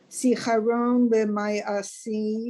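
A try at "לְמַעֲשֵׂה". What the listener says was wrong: not the my.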